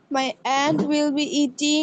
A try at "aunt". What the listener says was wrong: অ্যান্ট কেন? আন্ট হবে, আন্ট, আন্ট হবে। আন্ট,